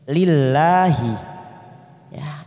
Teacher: lam jalalah karena didahului kasrah maka kita baca tipis. Lillahi ya, namanya mat tabi'i muqaddar, ada fathah berdiri di atas lam jalalah.